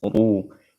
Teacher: Ru-nya dibaca tafkhim karena berharokat dhammah